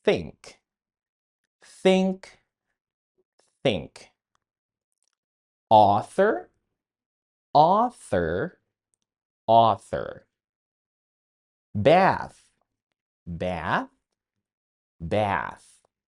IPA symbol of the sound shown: θ